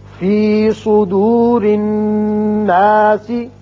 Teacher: الذی یوسوس، یوسوس فی صدور الناس، صاد پر پڑھیں گے حروف مستعلیہ میں سے ہے، را کے نیچے زیر ہے، اس کو باریک پڑھیں گے. نون مشدد ہے غنہ کریں گے، یہاں علامت وقف ہے، علامت ہے آیت ختم ہونے کی، آپ سین کو ساکن کر دیں گے اور نون پر مد کر سکتے ہیں الف پر.